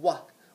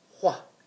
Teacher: instead of saying what we're going to try to make it more breathy like what